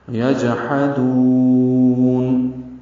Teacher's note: جیم ساکن پہ قلقلہ، ہا وسط حلق سے ادا ہوگا، دال کو لمبا کریں گے، وقفاً مد عارض سکون ہے.